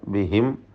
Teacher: സാക്കിനായ മീമിനെ ഇൽഹാർ ചെയ്ത് വെളിവാക്കി ഉച്ചരിക്കുക, മണിക്കാതെ. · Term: ഇൽഹാർ ഷഫവി